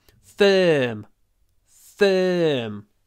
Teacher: pronounced with lips forward mouth open and the middle of the tongue pushed towards the top teeth